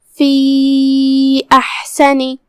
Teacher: ہم حا کو حلق کے درمیان والے حصے سے پڑھیں گے، آخری میں نون کے نیچے زیر ہے، لہذا اس کا دھیان رہے. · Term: حرف الحا